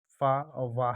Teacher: दंतोष्ठ से उच्चारित होने वाले व्यंजन फा और वाह है